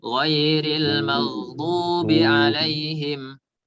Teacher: Nah, tidak boleh ada suara dengungan.